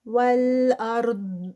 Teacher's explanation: ضاد ہیوی اور اس کو سٹاپ کریں گے اینڈ پہ